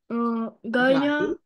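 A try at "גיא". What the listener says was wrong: Гай, без а, в оз.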